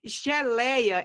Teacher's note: porque eu tenho a minha penúltima sílaba mais forte, só que ela é uma paroxítona que apresenta um ditongo aberto